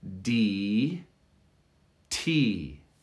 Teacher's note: with the t there's a small explosion of air that's built up there's pressure before you release the air d t and that small explosion creates the t sound d